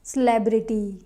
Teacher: it is celebrate celebrate but this is not celebrity it's celebrity here the second syllable is stressed who is your favorite celebrity not who is your favorite celebrity